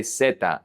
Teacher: Remember that in Latin America the Z is pronounced like an S. So, we say zeta.